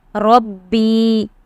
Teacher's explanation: Because the Ya, quiescent Ya with a Zer before it is a Ya Madda, and you have to drag the Ya Madda. The letters of Madda are to be dragged.